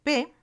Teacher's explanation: p así el sonido se representa entre corchetes p es oral es un sonido oral oclusivo bilabial y sordo